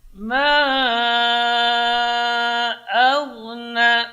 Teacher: a tipis, gha-nya tebal